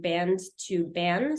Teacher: final consonant cluster reduction. So going from band to ban